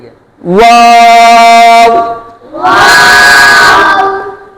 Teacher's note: ہونٹوں کو گول کر آئیں گے، او کی آواز اینڈ پہ نہیں آئے گی.